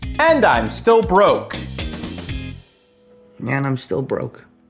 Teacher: There's this rising intonation on and I'm, which helps give it a friendlier tone. This is another way to help the listener know he's not being serious.